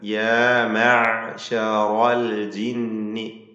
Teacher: ആയിന് തൊണ്ടയുടെ മധ്യം, അതുപോലെ തവസ്സുത്തിൻ്റെ അക്ഷരമാണ്. അൽ ജിന്നി നൂനിൻ്റെ നൂൻ മുശദ്ദദ മണിച്ചുകൊണ്ട് ഉച്ചരിക്കേണ്ട ഹർഫാണ്.